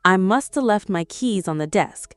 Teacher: The H in have disappears. The T in must disappears. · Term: dropped H